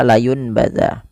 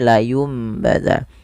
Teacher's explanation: Pada lafal layumbaz ini tidak lagi dibaca layunbaz tapi diganti nunnya bunyinya menjadi mim. Maka dituliskan di atasnya ini ada mimnya. · Karena dia bertemu ba, nanti bunyinya diganti dengan bunyi huruf mim atau huruf m. Maka tidak lagi dibaca layun baza, tapi layum baza, dan sambil ditahan 2 harakat. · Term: iqlab, iklab